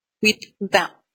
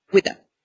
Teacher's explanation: Single sound here. So the same sound happened twice, and it just turns into one sound.